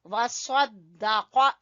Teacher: سواد کو بھی پر پڑھیں گے اور قاف کو بھی۔